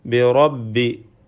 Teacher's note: റിനെ തഫ്ഹീം ചെയ്ത് പെരുപ്പിച്ച് സ്വരഭാരത്തോടെ ഉച്ചരിക്കേണ്ടതാണ്